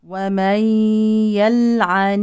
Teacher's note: لام ساكنه في فعل حكمها الاظهار